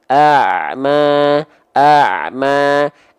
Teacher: keluarkan dia Ain dari bagian tengah tenggorokan keluar dari tengah tenggorokan dengan aliran nafas yang aliran suara yang sedikit mengalir ya A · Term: Ain sukun